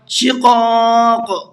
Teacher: دونوں بڑے قاف ہیں اور بڑے قاف کو پر کر کے پڑھا جاتا ہے